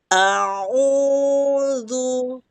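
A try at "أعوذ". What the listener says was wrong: Udah mulai turun, Bu, tapi masih ini sedikit agak naik. Coba lebih turunin. Fokusnya ke mulut sekali. Turunin ya Ustazah ya.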